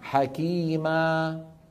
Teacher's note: الصوت المد لما بتوقف عليه يتلاشى يتخمد شيئا فشيئا